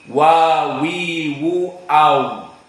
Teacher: Syafatan, dua mulut, bitadwir, dengan dilingkarkan. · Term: Makhraj waw